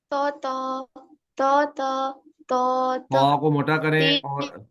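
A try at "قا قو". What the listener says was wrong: क़ा को मोटा करें, और क़ा को मोटा करें और जुबान को बिल्कुल तालू के साथ मिला लें। क़ा थो थो थो थो थो। त्वा त्वा नहीं करना, त्वा त्वा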